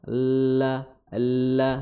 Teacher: dari tepi lidah sampai ujungnya ini menyentuh, ya, gigi seri gusi gigi seri atas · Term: makhraj lam